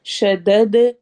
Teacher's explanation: دال پہ قلقلہ کرنا ہے، ایکو ساؤنڈ کے ساتھ پڑھنا ہے